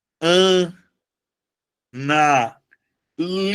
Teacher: No caso do verbo, a sílaba tônica, ela passa a ser a penúltima.